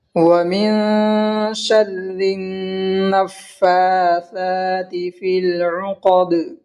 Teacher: نون میں اس لیے گننا ہوگا کیونکہ نون مشدد ہے اور نون اور میم مشدد میں گننا ہوتا ہے. اور فا کو پچھلے والے حرف سے یعنی نون سے ملا کر پڑھیں گے اور پھر فا کو ایک الف کے برابر کھینچ کر پڑھیں گے، اس لیے کہ فا مشدد کے اوپر کھڑا زبر ہے اور کھڑا زبر برابر ہوتا ہے الف مدہ کے.